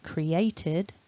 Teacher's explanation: with the past tense and past participle forms it ends in a d sound with an e in front of it